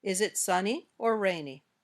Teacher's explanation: the intonation goes up on the first choice and down at the end.